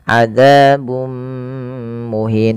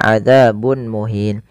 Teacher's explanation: dengan mim yang ini kita namakan dengan bacaan Idgham bighhunnah yaitu cara membacanya memasukkan tanwinnya kepada mim dan ditahan